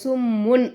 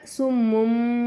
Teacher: உடைய சட்டம் வருது அதாவது இங்க நமக்கு தோ பேச்சு வந்திருக்கா தன்வீனுடைய குறியீடு தன்வீனுடைய குறியீடுக்கு அடுத்ததா பா வந்துச்சுன்னா அப்ப நாம என்ன செய்யணும் இந்த தன்வீனை நம்ம மீம் மாத்தி உச்சரிக்கணும் இந்த இடத்துல நம்ம சும்முன் அப்படின்னு சொல்லாம சும்மும் அப்படின்னு நம்ம சொல்லணும் புரியுதுங்களாமா